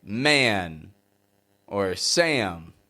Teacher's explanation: a is transitioning to a nasal sound like n or M when we have an a sound like a and it's followed by n or m words like man or Sam stretch a out to sound like a a this is the American twang this